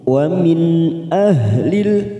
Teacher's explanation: nun sukun bertemu Hamzah namanya bacaan idhar halq kita baca jelas tanpa mendengung